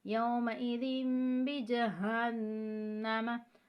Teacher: तनवीन के बाद बा आ रहा है तो यहाँ पे हम इक़लाब करेंगे और तनवीन को मीम में चेंज करके पढ़ेंगे, तब्दील करके, और गुन्ना करेंगे।